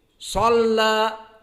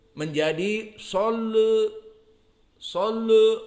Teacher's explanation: Imalah maknanya dia condong dan tentunya condongnya ke kasroh. Bukan ke 180 tapi ke bawah. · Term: al-imalah as-sughra